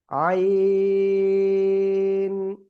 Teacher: গলাটা চেপে আপনি 4 আলিফ টানিয়ে উচ্চারণ করবেন